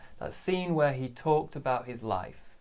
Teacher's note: So we don't stress where normally, no stress on that.